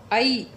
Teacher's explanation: ऐ ई की आवाज़ आ रही है पीछे